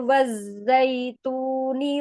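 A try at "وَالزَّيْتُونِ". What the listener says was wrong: coba Umi jangan tebalkan wazza, nah itu hilang asofirnya lagi wazza. Jangan diulang waz waz. zai makhrajnya dari mana? Sama dengan huruf apa? Dengan sin. Jadi bukan zaza tapi ada z asofirnya z azza. Ya, wazaitun, wattini wazaitun. Biasa aja, jangan ditebalkan, bukan isti'ala, istifal ya.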